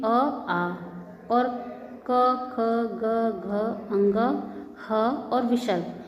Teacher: अ, आ और क, ख, ग, घ, अंग, ह और विसर्ग, इनका उच्चारण स्थान होता है कंठ